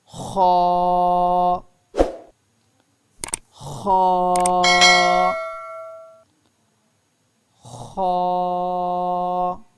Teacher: حلق کے آخری حصہ سے خا ادا ہوتا ہے